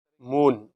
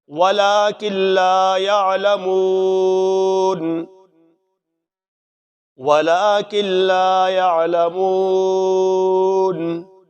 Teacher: مون، حرف مدہ ہے، مو کو ایک الف کے برابر لمبا کرنا ہے